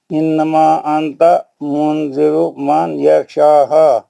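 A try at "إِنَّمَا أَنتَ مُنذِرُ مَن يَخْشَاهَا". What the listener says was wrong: تھوڑا کھینچ کے کیونکہ مد منفصل ہے نا، مد منفصل ہے، اخفا ہے.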